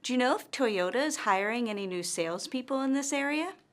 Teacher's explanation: notice that our intonation rises at the end of this yes-or-no question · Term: rising intonation